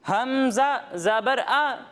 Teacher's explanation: جب ہم حمزہ کی ادائیگی کریں گے تو اس کی ادائیگی حلق کے نچلے حصے سے ہوگی